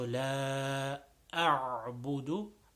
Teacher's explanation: So la over here is a little bit longer than the normal short stretches.